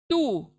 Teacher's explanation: अब देखें, 2 नुक्ते वाला त, 2 नुक्ते वाला त सिंपल अदा करते हैं हम तू, क्योंकि सामने के दांतों को लगने से पीछे की जबान सामने के दांतों के पीछे से लगती है, तो तू सिंपल बारीक पढ़ेंगे